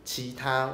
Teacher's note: almost everyone say chita with a nasalized vowel